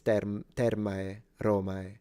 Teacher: the diphthong is separated and it's termae, romae. But that, and then you would have to also be careful when it comes to phonemic vowel length.